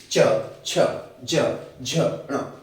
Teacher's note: इनका उच्चारण करके आप खुद देख लें कि ये स्पर्श तो करते ही हैं लेकिन संघर्ष भी करते हैं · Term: स्पर्श संघर्षी व्यंजन